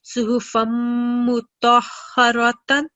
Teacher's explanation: So remember, when you're joining letter to a mim mushaddad, we prolong the sound for 2 seconds.